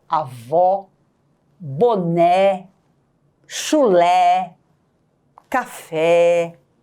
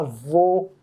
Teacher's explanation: o acento circunflexo que vai transmitir para a sílaba tônica uma pronúncia fechada